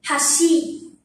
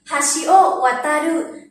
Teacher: Hashi bắt đầu ở âm thấp.